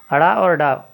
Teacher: जीभ की उल्टी नोक तालू को छूकर झटके से हट जाती है, उन्हें उत्क्षिप्त व्यंजन कहते हैं।